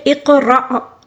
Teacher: حمزہ کے اوپر جو ساکن ہے اس کو ہم جھٹکے کے ساتھ پڑھیں گے